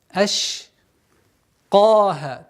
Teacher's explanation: Аш произносим максимально мягко, четко. Аш с применением свойства тафаши, то есть ш. · Твердое произношение каф с удлинением в размере двух огласовок.